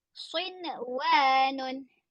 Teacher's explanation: Sinun nampak tak nun mati tu bertemu dengan wau tetapi tidak dengung. Ha kerana dia bertemu di dalam satu kalimah eh. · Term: izhar mutlak